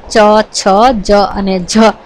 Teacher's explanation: અને આ જે છે ચ, છ, જ અને જ નું ઉચ્ચારણ જીભનો મધ્ય ભાગ ઊંચો થઈ અને તાળવાના આગળના ભાગને એટલે કે કઠોળ તાલુને સ્પર્શે છે અને એનાથી થાય છે. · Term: તાલવ્ય વ્યંજનો, તાલવ્ય વ્યંજન